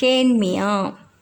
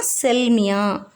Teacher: வருவது இதில் மீல் அதாவது மீ ங்குறது ம் கூட்டல் இையா சோ இதுல மீ யல உள்ள இகரம் குற்றியல் இகரம் இது சொற்களில் இடம் பெறும்போது தனக்குரிய மாத்திரை அளவிலிருந்து குறைந்து ஒலிக்கும்